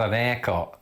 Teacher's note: Firstly, we're forever dropping H's.